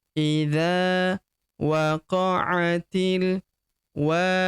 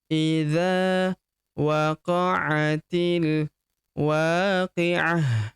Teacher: Idza waqa'atil wa huruf wa kita panjangkan dua harakat karena terdapat tanda alif di depannya